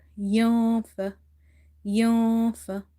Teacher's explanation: I have hidden this noon sound because I'm doing ikhfa here.